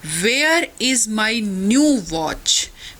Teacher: तो वेयर पे स्ट्रेस दिया, न्यू पर और वॉच पर, इज माई पर स्ट्रेस नहीं है, ये अनस्ट्रेस वर्ड्स हैं।